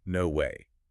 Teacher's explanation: The pitch spikes all the way up on the W and drops hard at the end of the word. It's a huge roller coaster.